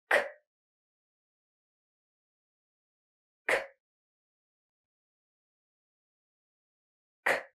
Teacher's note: You're just going to push out some air. And you're going to place the back of your tongue up there and you're going to push out some air with the back of your tongue. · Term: k sound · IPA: /k/